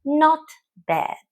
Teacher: with the stress on the second word usually said slowly